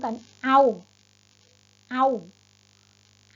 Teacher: เสียงมันจะทอดยาวไม่ได้นะลูกเสียงมันจะต้องปิดนะขาสั้นๆ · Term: สระเสียงสั้น